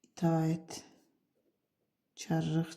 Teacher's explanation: həm son samiti tələffüz zamanı karlaşır, həm səs uzanması var